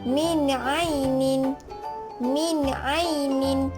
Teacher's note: apabila nun mati bertemu dengan huruf Ain, maka ia dibaca jelas